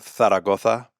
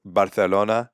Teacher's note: In Spain, they use a lisp on words with Z's and C's